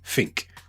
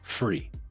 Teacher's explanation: swapping out the TH for an F